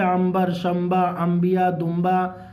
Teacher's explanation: اور نون ساکن کے بعد با آئے گا، چاہے اردو میں ہو چاہے نورانی قاعدے میں ہو، تو کیا ہوگا؟ میم سے بدل کے پڑھیں گے